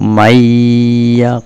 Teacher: suara Nun ya masuk ke dalam suara ya menjadi satu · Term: idghom gunnah